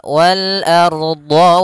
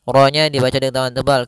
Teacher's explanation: Ardo, ar-nya tebal. Ro-nya dibaca dengan tebal. Kenapa? Karena dia ada huruf ra sukun di dalamnya huruf fathah. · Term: ro-nya tebal